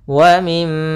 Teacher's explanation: Di sini ada mim berharakat tasydid, maka hukum tajwidnya kita namakan dengan gunnah. Cara membacanya yaitu suara mimnya ditahan dulu. Wa mim sepanjang 2 harakat.